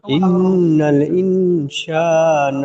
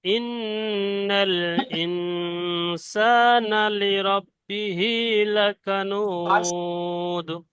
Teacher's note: এখানে নুনের উপর তাসদিদ গুন্না ওয়াজিব।